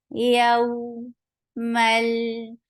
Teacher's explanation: Yaw, it is 2 counts long, and it is soft. Give a nice time on fatha and then attach with wow softly. That's why it is called lean, and lean means to make something soft.